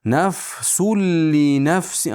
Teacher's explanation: Nafsul li nafsi, ammo bunda g'unna yo'q. Shunga e'tibor bering, g'unna yo'q. G'unnasiz idg'om. Tanvin lam ichiga kirgan.